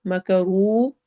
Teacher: واو میں ہونٹ گول ہوں گے